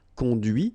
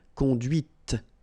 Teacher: final T is not pronounced cond here and then the feminine conduit T okay so here